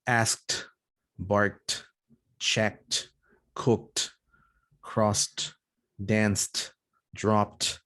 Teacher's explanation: before this t sound, there is a voiceless consonant